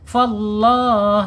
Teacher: Lam jalalahnya dibaca tafkhim atau tebal. Kenapa? Karena sebelum lam jalalahnya harakat fathah ya.